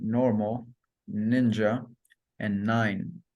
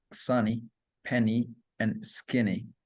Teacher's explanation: N, which is alveolar, nasal, and voiced